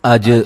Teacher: جیم کو ہلا کے پڑھیں گے، جیم قلقلہ ہے